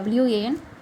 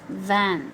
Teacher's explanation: It's a WAN, and as we all know, that's W. It's a bilabial sound, unlike van, which is used as a labiodental sound.